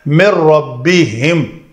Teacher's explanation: نون ساکن کے بعد یرملون میں سے را ہے، تو ہم نے اس نون کا ادغام کامل کیا، مکمل ادغام کر دیا، مِن رَبِّهِمْ.